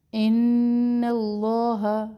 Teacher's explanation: نون مشدد غنہ ایک الف کے برابر ٹھہرے